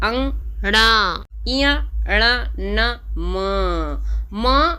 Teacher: अब नासिका, नाक से बोल रहे हैं, इनका स्वर देखो नाक से ही प्रतीत होगा।